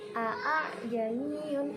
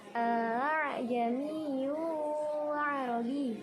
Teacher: Bacanya harus diseret. Hamzah yang kedua bacanya harus diseret atau dengan samar-samar. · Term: tashil